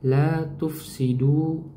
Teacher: fa di sini dia suaranya mengalir ya teman-teman ya. Memiliki sifat namanya sifat rokhwah. Mengalirnya aliran suara.